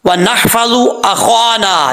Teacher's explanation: वाव को पढ़ते वक्त होंठ गोल करेंगे और नून के बाद हा है, हा बारीक पढ़ा जाएगा, इसको भारी साउंड के साथ नहीं पढ़ना।